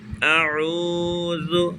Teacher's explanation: واو مدہ کو 1 second 2 second 3 second کم سے کم 1 second ضرور کھینچیں گے۔ اعوذ، زال عموماً لوگ غلطی کرتے ہیں ادا کرنے میں، زبان کا سیرہ اوپر کے دانتوں کی جڑ سے زال جڑ والے حصے سے زبان کے سیرہ اگلے حصے کو تالو جب اوپر کے دانتوں کی جڑ سے لگائیں گے اور ادا کریں گے۔